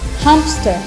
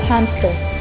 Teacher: Example for insertion: voiceless stop insertion where between a nasal consonant and a voiceless fricative. A voiceless stop with the same place of articulation as the nasal consonant is inserted.